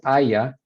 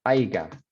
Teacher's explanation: Y la razón por la que es aiga, it's an assimilation. Aya is palatal, aiga is velar, so it just kind of moves itself back and becomes a stop.